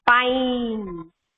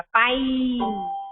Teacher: we hear a long I sound, and we do not hear the E sound in this pine word. है ना, पाइन में केवल ई है last में, पर हम उसका साउंड नहीं सुनते हैं.